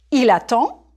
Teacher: There's no E after the D, so you don't say the D.